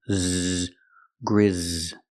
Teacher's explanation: The S is pronounced with the Z sound, like zebra, with vibration.